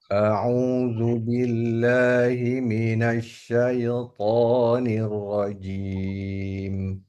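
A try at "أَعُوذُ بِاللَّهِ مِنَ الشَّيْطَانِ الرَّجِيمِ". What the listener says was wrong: Oke, masih ada sedikit pantulan tadi. Syaitan.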